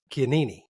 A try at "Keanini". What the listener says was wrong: You say all the vowels. It's Hawaiian, so it's Keanini.